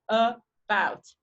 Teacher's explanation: so like here and about about has two syllables about so bout is the stress bit and uh is the beginning so it's unstressed and it's also produced with a schwa